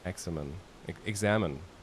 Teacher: an emphasis on the second syllable